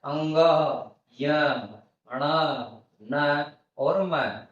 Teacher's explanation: इन सभी को नाक से बोला जाता है बिना नाक के इनका उच्चारण संभव नहीं है इसलिए इन्ह अनुनासिक वर्ण भी कहा जाता है मुझे आशा है